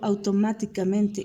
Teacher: automáticamente con acento secundario en men